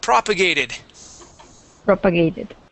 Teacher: so the stress is at the very beginning